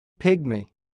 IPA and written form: ˈpɪɡmi (pygmy)